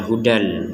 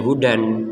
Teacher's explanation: harus kita baca dengan dimasukkannya tanwin ini kepada huruf lam. Hudal lil muttaqin, dibaca hudal.